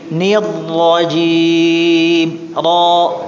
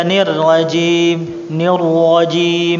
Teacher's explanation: ini ra-nya tafkhim ya Pak ya, ingat-ingat ya. Tebal, ra-nya tebal. Jangan dibaca nirrajim, nirrajim.